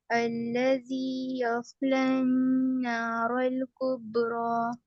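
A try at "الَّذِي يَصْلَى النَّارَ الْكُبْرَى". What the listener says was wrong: ٹھیک ہے ماشاءاللہ صحیح پڑھا ہے آپ نے، اچھا پڑھا ہے، لیکن تھوڑا سا ایسا لگ رہا ہے غنہ تھوڑا کم ہو رہا ہے، تھوڑا غنہ کریے۔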